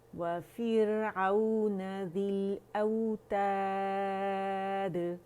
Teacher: واو باریک ہے, ہونٹوں کی گلائی سے ادا ہوگا